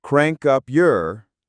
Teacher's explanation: with the y sound softened